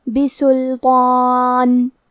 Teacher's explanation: کلمت بسلطان میں لام ساکن ہے تو ہم لام کو ظاہر کریں گے۔ تو پہ کھڑا زبر ہے تو یہاں مد الف ہے، لہذا ہمیں تو کو اور مد الف کو دونوں کو بھاری آواز میں پڑھنا ہے۔